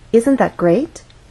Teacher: one syllable to make our voice Glide up great and and we're using Rising intonation because this question requires a yes or no answer · the final content word is great that means this is the point where our voice will go up great has one syllable so we only have one syllable to